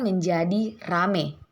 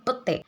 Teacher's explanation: Kata petai diucapkan menjadi pete. Perubahan ini terjadi pada bunyi vokal rangkap AI atau ai ke bunyi vokal tunggal e. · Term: Monoftongisasi